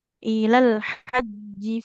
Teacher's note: huruf H-nya jangan seperti H ya. Di tengah-tengah tenggorokan.